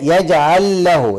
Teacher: اللام مع اللام في هنا ادغام بدون غنه